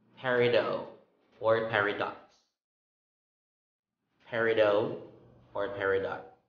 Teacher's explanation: you can let the t be a silent one or you can just pronounce it